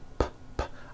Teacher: I stop ends with an unvoiced P.